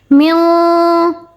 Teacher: یہاں نون کی آواز کو چھپا لیں گے اور غنہ کریں گے. میو، نون کی آواز چھپ گئی، من کر کے نہیں پڑا، میو میو میو میو، یہ کہلائے گا نون کی آواز کو چھپانا.